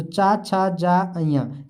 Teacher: वहीं हम चा वर्ग की बात करें तो चा, छा, जा, अइया ये आपके तालु में आते हैं। किसमें, तालु से बोले जाते हैं